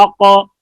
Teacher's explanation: اک, اور قاف میں قلقلہ ہے اور آواز پر ہے, منہ بھر کر آواز نکلتی ہے